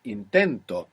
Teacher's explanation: For now, we need to think that the accent in the present tense is going on the penultimate syllable, the second last syllable.